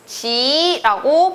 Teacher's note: 디귿이 이를 만나면 지읒으로 변하고